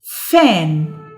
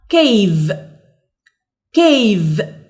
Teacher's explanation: وقلنا ان الاف voiceless sound but V is voiced sound